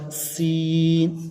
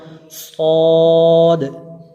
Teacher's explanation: ان 3 حروف زا، سین، صاد کو ادا کرتے وقت سیٹی کی طرح تیز آواز نکلتی ہے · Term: سیٹی والے حروف